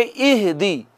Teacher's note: حمزہ اور ہا دونوں یہاں سے ادا ہوتے ہیں، اقصی حلق سے